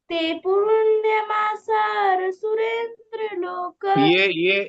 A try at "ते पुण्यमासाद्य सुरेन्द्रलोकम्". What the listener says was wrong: ये भी ध नहीं है, ये भी द है। ते पुण्यमासाद्य सुरेंद्र लोक।